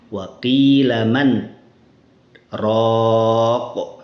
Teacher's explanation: saktah, berhenti sejenak tanpa bernafas